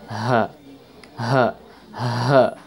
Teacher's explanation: suara ha itu makhrajnya atau tempat keluarnya itu dari dada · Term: ha besar